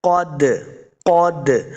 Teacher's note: قاف کو موٹا پڑھیں گے، قاف حروف مستعلیہ سے ہے